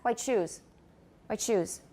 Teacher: hear a cha in there white shoes white shoes white shoes the tea and the ash will go together quickly and then we will hear the cha